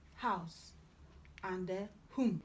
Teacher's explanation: Then you have he, glottal fricative, as in house, and whom.